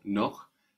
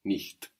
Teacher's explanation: the hard ch after the o, noch, and then the soft ch after the I sound, nicht